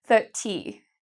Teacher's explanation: in British English a lot of the times you actually hear the T